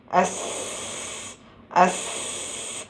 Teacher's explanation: താഴത്തെയും മുകളിലെയും മുൻനിര പല്ലുകളുടെ ഇടയിലുള്ള ചെറിയ വിടവിലൂടെ ശബ്ദം പുറത്തു വരുന്നു. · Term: വിസ്ലിംഗ് സൗണ്ട്